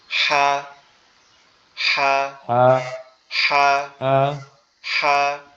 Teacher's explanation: আমাদের এই কণ্ঠনালীর মধ্যখান থেকে উচ্চারিত হবে, একটু মানে চাপা আওয়াজে। আমাদের ওই দেশে গ্রাম বাংলায় যে হাঁসগুলা পাওয়া যায় না, মেরি হাঁস বলে বা পাতি হাঁসের যে মদ্দা হাঁস বলে, যেগুলো পুরুষ হাঁস বলে, এগুলা দেখছেন একটু ফ্যাস ফ্যাসায় ডাকে, এরকম ফ্যাস ফ্যাসে আওয়াজে হবে।